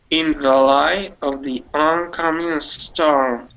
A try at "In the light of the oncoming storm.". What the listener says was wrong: All right, there you said a storm. Okay, so one more time.